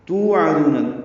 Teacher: عین وسط حلق سے ادا ہوگا